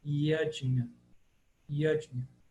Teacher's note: A gente está acostumado com Jagya ou Yagya ou qualquer coisa, mas em sânscrito o Y tem som de I, o J tem som de DJ e o N com tio é uma palatal